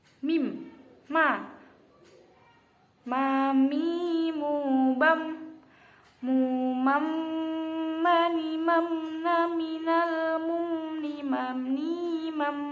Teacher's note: makhrajnya huruf mim ini harus dengung dibacanya karena mim ini termasuk salah satu huruf gunnah